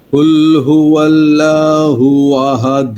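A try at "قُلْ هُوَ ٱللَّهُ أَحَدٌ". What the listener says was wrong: হ্যাঁ, আল্লাহু, এই উচ্চারণটা আরো মোটা করতে হবে। কুল হুয়াল্লাহু আহাদ।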